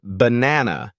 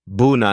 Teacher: it sounds like a weak or lazy uh and is often found in unstressed syllables for example in the word banana the first and last a · in the word banana, the first and last A are pronounced as a schwa. So, it sounds more like bunana.